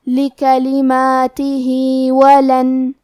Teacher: ہم اپنی آواز 2 مد کے برابر لمبی کریں گے. آخری میں حرف الہا ہے، اگر ہم یہ کلمہ پہ رکیں گے تو ہا پہ جزم سے رکیں گے، لیکن یہ کلمہ کو پوری آیت کے ساتھ ملا کے پڑھے تو کیونکہ اس کے نیچے کھڑی زیر ہے تو یہاں حکم ہے مد صلہ صغرا.